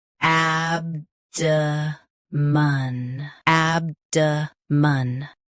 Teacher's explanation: Both US and UK have the same pronunciation of this word. Stress ab, keep d soft, and end with a light mun.